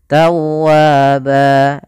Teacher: ada lafal wau yang bertasydid bertemu dengan alif begitu pula dia kita namakan dengan mad tabii panjangnya dua harakat